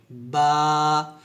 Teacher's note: ওয়াও অর্থাৎ প্রথম ঠোঁটগুলো হয় এবং শেষও ঠোঁটগুলো হয় ওয়াও এভাবে বা টা যখন উচ্চারণ করি দুই ঠোঁট মিল করে অর্থাৎ দুই ঠোঁটের ভিজা অংশে মিল করে